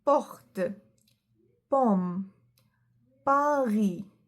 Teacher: Remember, there is no aspiration in letter P. It's not said as P sound.